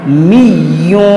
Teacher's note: اور یہاں پر دیکھیں یا جو ہے مشدد ہے، اس کو پڑھیں گے 2 بار، می یوں، اور پھر تنوین کے بعد واو ہے، حروف یرملون، تو یہاں پر ادغام ہوگا، می یوں، یعنی غنہ کریں گے، اور عین کو نرمی سے پڑھیں گے اور را کو موٹا کریں گے، آرا۔